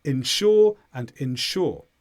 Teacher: When you say them quickly, because the first syllable is not stressed, they sound almost the same · So insure, insurance, this is money that you pay once a year or every month to a certain company, and then if something goes badly wrong with your car, your insurance company will pay the bill for you. Now, the stress here is on sure each time